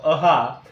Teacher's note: विसर्गाचा उच्चार करत असताना काय केला जातो श्वास मोकळा सोडला जातो आणि त्याने जे हवा बाहेर मुक्त होते हवा बाहेर बाहेर पडते त्याच्यामधून काय विसर्ग विसर्गाचा उच्चार होतो त्याला